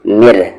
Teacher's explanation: را کی ساؤنڈ یہاں پر نیچے جا رہی ہے، اس لیے یہ را لائٹ پڑھا جائے گا، یعنی کہ را کی پتلی آواز ہوگی. مر نہ کہ مر.